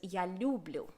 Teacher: in the west of ukraine this often gets pronounced as yalu blue with the stress on the first syllable